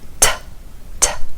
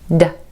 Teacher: T, T, air puff. D, no air puff.